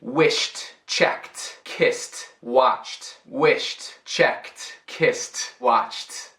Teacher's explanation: o verbo termina com o som que não está vibrado na garganta? Isso pode ser o som de F, pode ser o som de S, ou também som de tipo ch ou sh. · Isso pode ser o som de F, pode ser o som de S, ou também som de tipo ch ou sh. Caso sim, o ED não é sílaba extra e é somente o som de T aqui